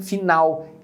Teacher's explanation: em português geralmente o l final é pronunciado com o som de u por exemplo a palavra final a gente pronuncia com um som